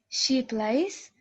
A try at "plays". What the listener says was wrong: Plays, not place.